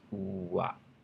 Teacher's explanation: It just starts out with an oo, so your mouth is very tight and round. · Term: complex vowels